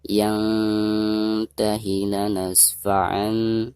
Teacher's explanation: Nun sukun berhadapan dengan salah satu huruf ikhfa, di sini huruf ta, maka cara membaca nun sukunnya itu harus disamarkan disertai dengan dengung.